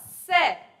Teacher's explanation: दोनों ऊपर नीचे के दांतों के बीच में से हवा बाहर निकल जाती है और यह क्या हो हो जाता है दंत्य हो जाता है